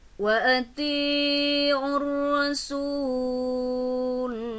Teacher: ada alif lam bertemu dengan ro bertasydid, sehingga alif lam tidak terbaca jelas, maka berhukum alif lam samsiyah